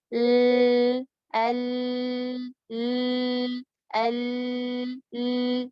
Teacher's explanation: jadi suaranya keluar dari samping. Karena di tengah ketutup dengan sempurna, tapi masih ada celah di sisi lidahnya. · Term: bainiyah